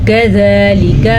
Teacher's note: زال کے اوپر کھڑی زبر ہے تو اس کو ہم تھوڑا لمبا کر کے پڑھیں گے